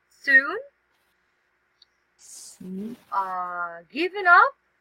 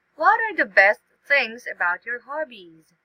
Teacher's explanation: The last part should be in a rising intonation.